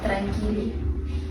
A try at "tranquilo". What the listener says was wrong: No, just drag it a bit. Tranquilo.